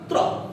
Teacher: ता में आपके दांतों के पास जीभ आती है और रा में दांतों से ऊपर वाले मसूड़े पर जीभ जाती है, जहां पर थोड़ा सा कंपन होता है · ता पे जीभ आते ही ऊपर जाएगी और वहां पर कंपन होगा